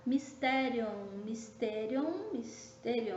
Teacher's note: no mysterium, nós temos a nossa palavra sendo acentuada na antepenúltima sílaba